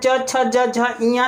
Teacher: च, छ, ज, झ, इया, तालु से निकलता है